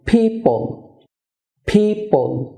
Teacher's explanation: পি উচ্চারণের সময় দুই ঠোঁট বন্ধ করে উচ্চারণ করতে হবে